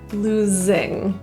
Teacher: The S in losing is actually pronounced as a Z, losing.